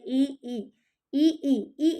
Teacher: जीभ का जो आगे का भाग है ना, वो थोड़ा सा दांतों से टच होते हुए वो सक्रिय रहता है। जैसे ऐसे लगता है कि जिह्वा के आगे वाले भाग से ही ई और ई का उच्चारण निकल रहा हो। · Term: अग्र स्वर